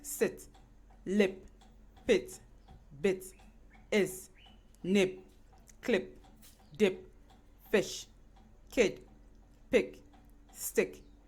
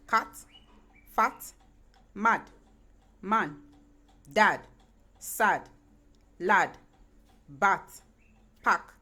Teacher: you pronounce the monophthongs they do not glide